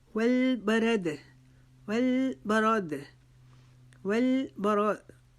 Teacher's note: را کو ہم نے موٹا پڑھنا ہے کیونکہ را کے اوپر زبر آ رہی ہے